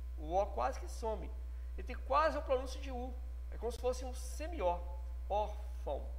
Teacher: Observe que esse A tem um som mais forte do que o O na pronúncia. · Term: ditongo